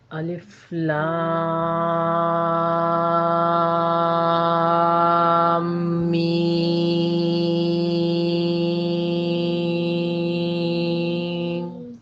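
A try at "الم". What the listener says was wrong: الف لام میم۔ یہ غنہ نہیں تھا، یہ میں نے آپ کو بتایا تھا کہ جہاں میم پر اور نون پر شد آئے گا وہاں آپ نے اس کی آواز کو تھوڑا سا دبانا ہے۔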